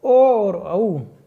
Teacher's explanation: ओ तथा औ वर्ण कंठ तथा ओष्ठ दोनों स्थानों से मिलकर बोले जाते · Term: कंठोष्ठ्य वर्ण